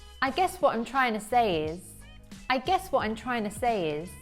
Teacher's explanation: Reduce the word to to tuh and stress the words guess and trying